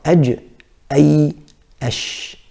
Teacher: So what happens with these three letters in terms of the makhraj is the middle of the tongue is moving up towards the middle of the upper palate